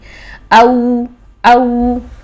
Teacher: واو ساکن سے پہلے زیر نہیں آتی ہے. تو واو ساکن سے پہلے جب زبر ہو تو یہ واو لین ہے اور اس کو ہم شفتان سے ادا کریں گے